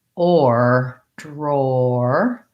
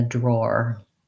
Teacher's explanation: we have not really the ah sound but the o or diphthong